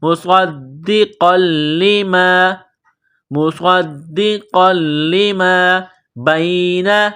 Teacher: بِإِذْنِ اللَّهِ مصدقا، صاد میں سیٹی کی آواز پیدا کریں گے، صاد کو موٹا کریں گے، صاد کو دال کے ساتھ ملانا ہے، دال میں سختی کرنی ہے۔ مصد، قاف کے اوپر 2 زبر تنوین ہے، قاف کو موٹا کرنا ہے، لام کے ساتھ ملانا ہے، لام کو دبانا ہے